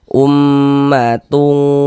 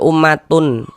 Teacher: Jadi bunyi nun sukun atau bunyi tanwinnya dibaca samar dengan kita bersiap-siap masuk ke dalam huruf ikhfanya. Kemudian juga dia didengungkan, dighunahkan. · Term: ikhfa hakiki